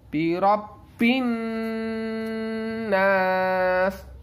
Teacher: Birobin, nun yang bertasydid ini adalah gunnah. Nun dan mim yang bertasydid itu gunnah ya teman-teman ya. Maka dia harus dengung.